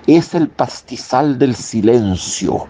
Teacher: suena lindo por el uso de las sibilantes abiertas, fricativas